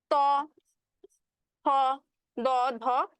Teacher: দন্ত মানে হচ্ছে দাঁত, দন্ত মানে দাঁত। তো যে ধ্বনিগুলো উচ্চারণের সময় আমার বাতাসটা বা জিভটা কোথায় বাধা পাবে? দাঁতে বাধা পাবে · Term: দন্ত ধ্বনি